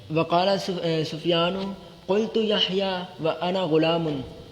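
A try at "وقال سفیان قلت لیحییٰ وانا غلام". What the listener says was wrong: کول تو لے یحییٰ لام چھوڑ رہے ہیں آپ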